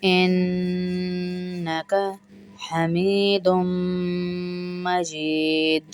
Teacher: دو غنے ہیں اس میں، دونوں نون مشدد اور میم مشدد پہ غنہ ہوگا اور دال پہ قلقلہ ہوگا